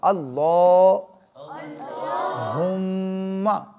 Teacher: ہاں حلق سے ادا ہوگی اور میم کے اوپر کیا ہوگا؟ غنہ ہوگا۔ نون میم مشدد پہ غنہ ہوتا ہے۔